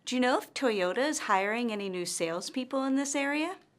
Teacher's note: her intonation rises at the end of this yes or no question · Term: rising intonation